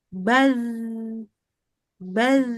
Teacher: huruf zal itu dia lembut tuh, ngalir seharusnya. Tapi nggak ada hembusan udara. Maka ya sama aja kayak zal bersukun.